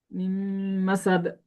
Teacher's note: নুন সাকিনটা কি হচ্ছে না উচ্চারিত হচ্ছে পরের শব্দের সাথে মিলা যাচ্ছে